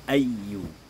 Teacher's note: ada ya di situ yang ya tasdid, maka ya tasdid ini dibaca sedikit ada penekanan.